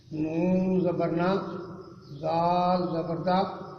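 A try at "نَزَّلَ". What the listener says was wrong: یہ زال نہیں ہے.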